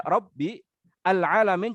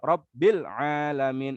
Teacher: Kalau dieja Rabbi al-alamin jadi hamzah qatha, tapi kalau diwasol Rabbil alamin